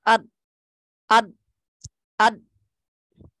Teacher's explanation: اچھا، دوسری چیز یہ کہ اس میں جو غلطی ہے پڑھنے کی وہ کیا ہوتی ہے کہ پڑھنے والا یہاں پر پڑھنے والا یہاں پر فجوہ نہیں چھوڑتا، یعنی سوراخ نہیں چھوڑتا۔ جب آپ پورے طور پر منہ کو یعنی زبان کو بند کر دیں گے اد اد اد، تو آواز رک جائے گی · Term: شدت